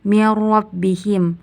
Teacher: hukumnya idgham bila guna karena nun sukun bertemu dengan ro. Pada ayat ke-6 bagian sawaun alaihim, hukumnya izhar halqi karena tanwin bertemu dengan ain.